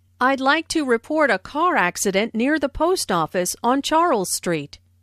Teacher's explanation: notice how the keywords car accident post office and Charles Street are stressed